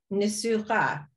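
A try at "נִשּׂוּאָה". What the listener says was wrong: Yes. Mm-hmm. Excellent. Nisucha. Excellent. Excellent.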